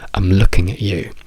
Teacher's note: Quindi diciamo I'm looking at you, dove l'accento è su looking.